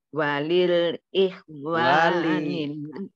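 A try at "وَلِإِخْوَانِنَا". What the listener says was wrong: wali tidak lil wali ikhwani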